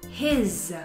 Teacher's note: la S, a pesar de estar así escrito con S, his se pronuncia como una Z